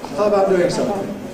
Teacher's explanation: ‘How’ plus ‘about’ [ ˈhaʊ əbaʊt ] can become [ ˈhaəbaʊt ].